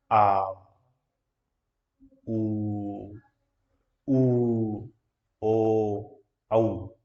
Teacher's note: पश्च स्वर का उच्चारण करते समय जीभ का पीछे का हिस्सा जो है ऊपर उठता है